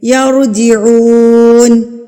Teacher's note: او پہ بھی سیم واو ساکن ہے، اور واو ساکن سے پہلے ہمارے پاس پیش ہے تو یہ واو مدہ کہلائے گا، یعنی کہ ہم اس کو ایک حرکت کے برابر کھینچ کے پڑھیں گے